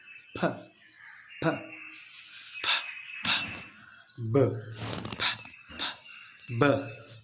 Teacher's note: bilabial sounds are those sounds that are produced with the help of our upper and lower lip. So when you say the sound p, p, p, p, b, p, p, b, so you feel that these sounds are involving or engaging two articulators like your upper and lower lip.